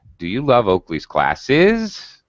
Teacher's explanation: Again, you use final rising intonation.